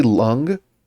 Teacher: say lung, but just hold out the last one without making the G sound. So just lung, and then and just don't finish it. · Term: long ng sound